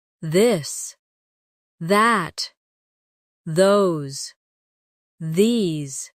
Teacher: the softer version of th where you let your tongue touch your teeth lightly but use your voice